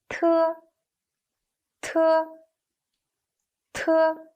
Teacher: Its position and manner of articulation are the same as those of de, but it's aspirated. You can feel a puff when you pronounce it.